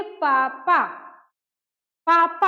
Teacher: हाँ, अब मान लीजिए हम बोलेंगे पापा, पापा, हम पापा बोलेंगे तो क्या, किस चीज को क्या छू रहा है? दोनों ओष्ठ एक दूसरे को स्पर्श कर रहा है यानी छू रहा है · ओष्ठ, क्योंकि हम पापा जो बोलते हैं तो दोनों ओष्ठ आपस में क्या होता है? टच होता है, स्पर्श होता है